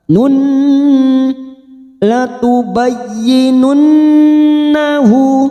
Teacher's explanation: Latubayyinunnahu, sekarang kita wasol atau terus hadhamir yang berharokat dhammah terbalik ini kita baca panjang 2 harokat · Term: mad silah khosirah